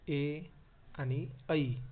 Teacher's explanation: की कंठाचा पण वापर आणि तालव टाळूचा पण वापर होतो की ज्या वर्णांचा उच्चार करताना कंठ व टाळू या दोन्हींचा उपयोग होतो अशा वर्णांना कंठ तालव्य वर्ण असे म्हणतात